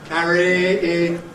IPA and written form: ˈkæri (carry)